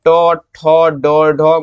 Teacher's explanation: इसका उच्चारण जो है बाबू ये आपका मूर्धा से होता है